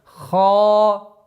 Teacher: Твердое произношение ха, естественно, долгота в размере двух огласовок.